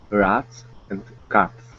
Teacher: so this ah sound, your mouth will be very open